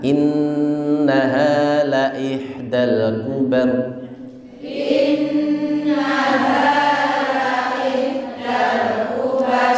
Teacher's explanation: innya ditekan karena dia gunnah